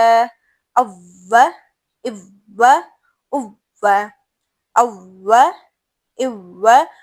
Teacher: منہ گول ہو رہا ہے, نرمی سے ادا ہو رہا ہے, کوئی جھٹکا نہیں ہے